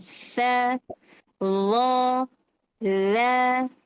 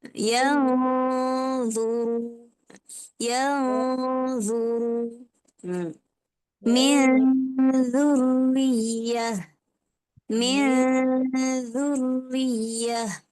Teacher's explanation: Lidah kita tu terkeluar kan dia antara gigi seri atas dan bawah.